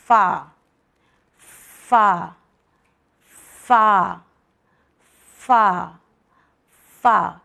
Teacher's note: اوپر کے 2 دانت ہمارے لپ کے گیلے پارٹ سے نکلتے ہیں، فا، نمی یا ہونٹ کے نمی سے نکلیں گے، فا فا فا فا یہ ہمارا لیٹر ہے جسے صحیح مخرج اور صحیح تجوید سے ادا کرنا ہے۔